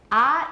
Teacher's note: it's the lowest and most back vowel